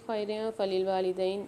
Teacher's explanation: یہاں پر را کے نیچے 2 زیر ہیں، 2 زیر کی تنوین کے بعد فا آ رہی ہے، یہاں پر دوبارہ سے فمال غنہ والا قاعدہ ہوگا، غنہ کر کے پڑھیں گے